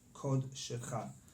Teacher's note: because, right, we didn't learn these rules yet, but here you would say kod instead of kad. Here the kamatz will be pronounced as o